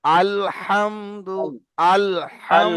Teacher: আলের যে লামের সময় যখন জিভটা উপরে গিয়ে ঠেকছে, ওই ঠেকা অবস্থায় আপনি হাটা উচ্চারণ করবেন, না হলে আলহামদুলিল্লাহ হয়ে যাবে।